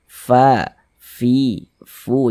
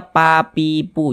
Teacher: Kemudian huruf fa itu dia salah satu huruf yang memiliki sifat hames. Kalau mengucapkan huruf fa maka harus ada nafas yang mengalir ketika kita mengucapkannya. Fa fi, fu. Jangan dibaca pa, pipu.